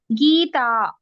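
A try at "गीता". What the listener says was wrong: Gita. Correct.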